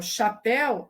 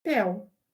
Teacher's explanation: ela apaga a sílaba que não é tônica, a sílaba átona. Então, em chapéu, ela pronuncia pel. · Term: apagamento